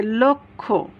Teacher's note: লয়ের সাথে একটা অ আছে আর তারপরে এই কয়ে মূর্ধন্য ষ, তাহলে এই লটা ওয়ে পরিণত হবে